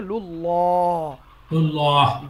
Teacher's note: আল্লাহর নামের পূর্বেও যদি জাবার অথবা পেশ থাকে তাহলে পুর হবে, মানে মোটা উচ্চারণ হবে